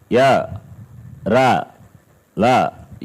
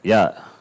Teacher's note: Little touch or no touch, incomplete. The touch is not complete contact. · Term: Ishat Sprishtam